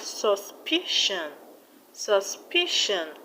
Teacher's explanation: the stress will be on the second syllable from the end, which is PI.